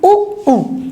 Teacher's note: जब हम उ उ बोल रहे हैं तो हमारे ओस्ट जो है गोल हो रहे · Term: ओष्ठ